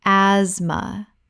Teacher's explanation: The t h is completely silent. This is a two-syllable word.